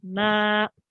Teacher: It's 2 seconds, and this is called alif madda because you have a alif, and before the alif, you have a fatha. So that makes the alif long for 2 seconds